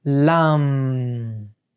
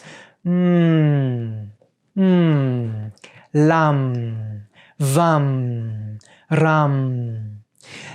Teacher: it starts with something which sounds like mmm and then turns more into a kind of n sound which comes from the nose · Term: Bindu